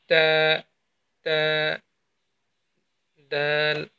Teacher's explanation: সামনের ওপরে ২ দাঁতের গোড়া এবং আপনার জিহ্বার আগা একসাথে সংযুক্ত হয়ে তাটা উচ্চারিত হবে।